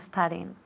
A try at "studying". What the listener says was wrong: Okay, cuidado con la E delante de la S. There's no point in, no es studying, pero studying.